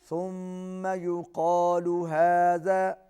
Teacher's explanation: میم پر پھر غنہ ہے، آواز ناک میں جائے گی